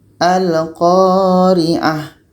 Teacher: A ini tetap kita baca pendek dan ta marbutoh ini kita matikan. Yaitunya menjadi huruf H yang mati. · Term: ta marbutah